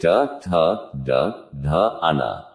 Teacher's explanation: मूर्धन्य जीहवा की मूर्धा से